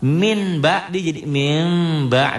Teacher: Apabila nun mati atau tanwin berhadapan dengan ba, bunyi n-nya berubah menjadi m, tetapi disertai dengan samar. Min ba jadi mim ba, samar sedikit. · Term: iklab